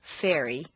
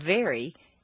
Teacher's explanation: f is a hiss and V is a buzz the V is the voiced pair of f as you saw